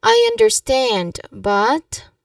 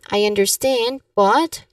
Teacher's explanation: The tip here is you emphasize on stand in the word understand and then you soften but